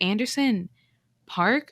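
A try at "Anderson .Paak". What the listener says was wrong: Pack. Pack. Well, there's no R. Paak.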